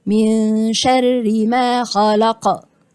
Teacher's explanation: وهو حرف القاف يبقى من صفاته القلقلة